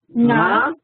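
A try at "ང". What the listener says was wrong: Yeah, I'm not using the tongue here. If you use it, then it becomes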